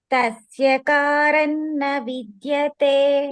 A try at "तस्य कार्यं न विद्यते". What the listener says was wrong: It's not karan, karyam. Karyam means karyam, not karan, karyam.